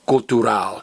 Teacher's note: It's spelled exactly the same in English and Spanish, but in Spanish, it's pronounced cultural. You stress the very last vowel, because it's what I call a lizard word. Remember, if a word in Spanish ends in L, Z, R, or D, the very last vowel gets stressed.